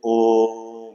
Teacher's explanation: पढ़ा लेकिन जब इसे हम मंत्र के रूप में खींच तो ओ जो कि स्वर है इसे तीन बार या तीन मात्रा तक खींचें जैसे ओम इस तरह से ओ जो है तीन मात्रा तक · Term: प्लू स्वर